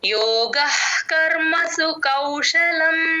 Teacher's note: ఔ ఔకారం ఇలా నోరు రౌండ్ గా అవ్వాలి